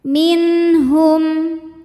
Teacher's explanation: nun sukun menghadapi huruf tenggorokan yaitu ha, maka nun sukun n bacanya jelas. Minhum. Hum ada hukum idhar syafawi karena mim sukun menghadapi huruf selain mim dan ba yaitu huruf ya. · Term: halqi